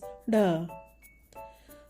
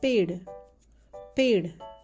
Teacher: It's the retroflex sound, that is, the rolled tongue touches the roof of your mouth while pronouncing.